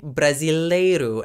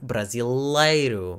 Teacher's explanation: when Brazilians say an L sound, it is a much lighter sound that's made by using the broader tip of the tongue against the palate